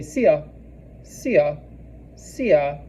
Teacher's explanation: So the way I would tell people to remember this is, if you're seeing a friend and you haven't seen in a long time, you're like, oh, I see my friend, aw. And then the ah is really staccato. It's very like quick and short. So you would say sia, sia, sia.